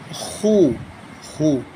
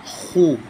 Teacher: Kha, zamma, khu. By producing the sound of zamma, pesh, we make our both lips in a round shape.